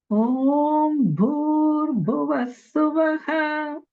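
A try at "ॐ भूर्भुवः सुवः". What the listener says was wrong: Good. Notice the two Mahapranas, Bhu in Bhur and also Bhu in Bhuvas.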